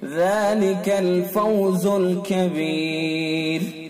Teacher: وقف کر دیا تو را ساکن ہو گئی، اور را ساکن سے پہلے یا ساکن ہے تو یہ را باریک پڑھی جائے گی۔ را ساکن سے پہلے اگر یا ساکن ہوتی ہے تو را ہر حال میں باریک ہوتی ہے، تو یہاں وقف کر دیا، وقف کی وجہ سے را ساکن ہو گئی تو لہذا را کو باریک پڑھا جائے گا۔